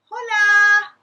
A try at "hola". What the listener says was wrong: I think the H is silent.